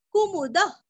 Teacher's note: विसर्ग का उच्चारण हल्का सा ख